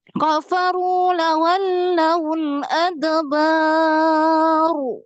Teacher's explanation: ketika berwakaf roknya jadi tafkhim tebal